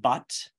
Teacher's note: you've got the stressed schwa which is the uh that we would find in but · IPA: /ʌ/